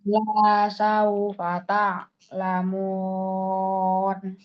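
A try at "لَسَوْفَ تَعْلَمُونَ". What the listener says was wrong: Nah, itu bagus. Yang tadi bagus, yang terakhir.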